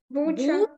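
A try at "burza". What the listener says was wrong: Ж, не буча, бужа. Там не РЗ, то ми читаємо як Ж. Ми ще коли учили ці букви, то ми казали може, так? Оце правило підходить на ці букавки.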